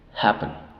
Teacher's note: la primera sílaba es la tónica y la segunda sílaba es la sílaba débil